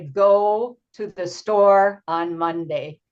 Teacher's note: Monday has stress on the first part